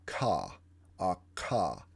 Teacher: you feel your back of your tongue raise up against your velum and say, the k sound.